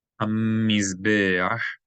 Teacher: You're going to elongate the M sound a little bit because there's a dagesh in the mim, so you geminate it. This is called geminating.